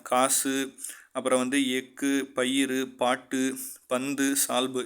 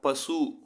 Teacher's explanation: காசு, அப்புறம் எக்கு, பயிறு, பாட்டு, பந்து, சால்பு, இதில் எல்லாத்துலேயும் இறுதியில் பார்த்திங்கன்னா இந்த குசுடு துபுருங்கிற வார்த்தையில் தான் முடிவடையுது. இதில் இறுதியில் வரும்பொழுது மட்டும் ஒரு மாத்திரைக்கு பதில் அரை மாத்திரையில் குறைந்து ஒலிக்கும். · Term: குற்றிய லுகரம்